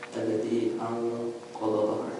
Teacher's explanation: a good example of a gunna when in the case where it is strong, because the noon is followed by a qaf